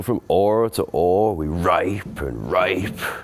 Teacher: the H drops at the beginning